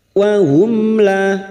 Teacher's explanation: Mim sukun bertemu lam alif idhar syafawi. Mim sukun dibaca jelas tanpa mendengung. Wahum la. Lam alif 2 harokat.